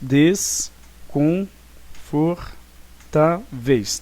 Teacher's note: Nós temos então aqui uma paroxítona, que vamos identificar aqui então a sílaba tônica, é o tá. Então é uma paroxítona, porque é a penúltima sílaba mais forte. Dessa forma, esta palavra deveria ser acentuada porque é uma paroxítona terminada em ditongo.